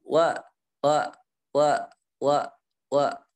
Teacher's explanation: mengucapkan huruf wau tanpa membulatkan bibir